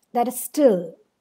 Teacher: that and is are both unstressed. Still is stressed. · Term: anapest